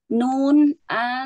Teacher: itu keluarnya dari ujung lidah bertemu dengan gusi atas